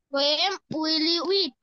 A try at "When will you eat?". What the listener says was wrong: When? এম না, এন।